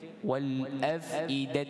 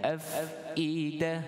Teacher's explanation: kita waqaf dengan ta diganti pada bunyinya ha. Afidah. Baik, jadi bacaan pada alif lam qamariyah itu jangan kita tambah.